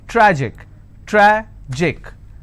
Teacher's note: Tragic, tragic, I will stress on tra.